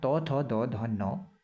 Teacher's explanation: दांतों के पास से उच्चारण होता है दंत्य वर्णों का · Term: दंत्य व्यंजन